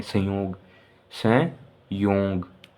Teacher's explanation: जिस ध्वनि के उच्चारण में वायु नाक के द्वारा बाहर निकाली जाती है उसे क्या कहते हैं? अनुस्वार कहते हैं।